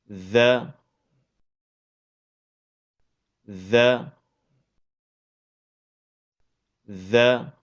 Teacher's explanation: dari ujung lidah yang bertemu dengan ujung gigi seri atas